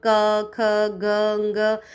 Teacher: क, ख, ग, ng ऐसा उच्चारण करते हैं तो हमारा साउंड कंठ से आता है